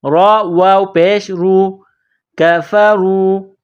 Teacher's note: را کے اوپر پیش ہے تو را کو موٹا کرنا ہے ، را کو واو کے ساتھ پلس کرنا ہے، را واو